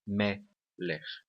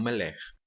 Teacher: A tonicidade da palavra melech está na primeira sílaba